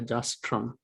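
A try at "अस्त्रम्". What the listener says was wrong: no not trump there's no t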